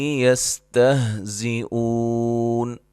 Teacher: سین کو باریک سیٹی سے، واو لین ہے، حمزہ کو جھٹکے سے ادا کریں گے